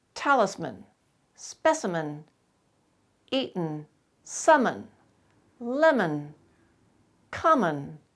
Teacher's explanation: in all these words you'll notice the final syllable is not stressed